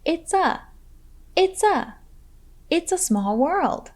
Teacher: small world remember it's is a contraction of it is and be sure to link the words it's and a